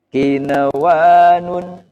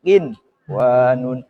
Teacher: Jadi membacanya idhar dengan jelas, tidak boleh tawalud, tidak boleh saktah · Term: idhar wajib